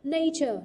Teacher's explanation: trọng âm rơi vào âm tiết thứ nhất